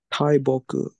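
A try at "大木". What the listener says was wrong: Perfect.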